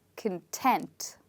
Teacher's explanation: we stress on the second part, and that's why we say content, because the first part becomes much softer